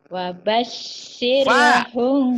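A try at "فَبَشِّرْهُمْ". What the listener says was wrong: Fa, bukan wa. Fa. Wabashirhum. Ah, itu bacanya wa tadi. Ya, karena mulutnya ngantuk. Wabashirhum, wabashir. Fa, tapi kedengarannya kayak wa ya. Ayo, fabashir.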